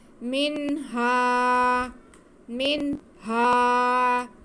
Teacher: ہم نون کی آواز کو اور ہا کی آواز کو واضح کر کے پڑھتے ہیں ، تو یہاں پہ بھی ہم نون کی آواز کو بھی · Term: اظہار